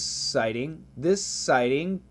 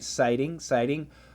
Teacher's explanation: Sighting is a flap T.